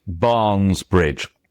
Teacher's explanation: It's 2 stressed syllables right next to each other because English wants to be iambic all the time.